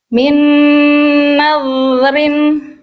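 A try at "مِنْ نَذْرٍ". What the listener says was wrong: Jadi Bunda lidah dalamnya lebih rileks lagi Bunda. Lidah dalam Bunda masih ngangkat dikit. Min naw, jangan naw, naw. Min nadrin. Kalau yang awal Bunda masih naw, naw, jangan naw, naw. Lidah dalamnya rileksin sama Bunda.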